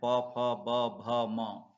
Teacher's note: ध न और इसके बाद ओस्ट अर्थात बाहरी भाग ठ के ओठ के द्वारा बोले जाने वाले व्यंजन है